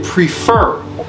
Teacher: the stress is on the second syllable, or the final one, since this one has only two syllables.